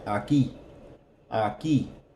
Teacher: Notice the accent on the I, aquí, aquí. That's where that stress is.